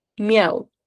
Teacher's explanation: Y tengo tres vocales en una misma sílaba, la i, la a y la u. No se separan en ningún momento.